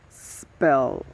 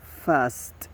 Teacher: the voicing is voiceless. The place of articulation is alveolar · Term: the s sound